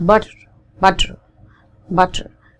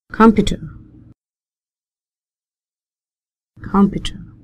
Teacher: it's a combination of T and D softer D